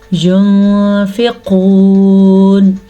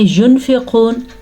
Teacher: نون ساکن کے بعد فا حروف اخفا میں سے آیا ہوا ہے، تو نون ساکن کی آواز کو ہم چھپا کے پڑھیں گے اور غنے کے ساتھ پڑھیں گے. یعنی کہ عام طور پہ ہم پڑھتے ہیں ينفقون، نون کو پڑھ لیا اور غنہ بھی نہیں کیا.